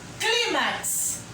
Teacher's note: Eu tenho a última sílaba, max, e tenho a penúltima sílaba, cli. Cli é a sílaba tônica, penúltima.